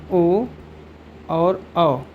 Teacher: और दूसरा सूत्र है ओ दो तो कंठोष्ठ, ओ दो तो कंठ ओष्ठ, अर्थात ओ और औ इन दोनों का जो उच्चारण स्थान है क्या हो जाएगा? कंठ ओष्ठ।